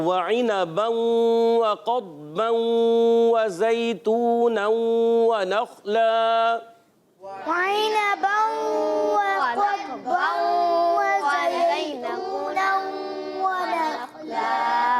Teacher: زا کی ادائیگی سیٹی کے ساتھ. اچھا بعض بچے زا کو اتنا سختی سے ادا کرتے ہیں، یہ سختی سے نہیں پڑھتے، نرمی سے پڑھتے ہیں. · واو کی ادائیگی ہونٹوں کی گولائی سے، حرکات کو بغیر کھینچے.